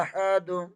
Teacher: دال کے اوپر 2 پیش ہیں، دال کا مخرج ادا کرتے ہوئے وقتی صورت میں دال ساکن ہو جائے گا اور کلکلا بھی ہوگا۔